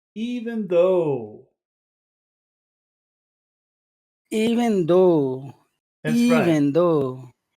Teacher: so the way this sounds it's long short long